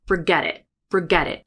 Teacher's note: So we have two T's. One is a flap and one is a glottal stop. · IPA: ferge/diʔ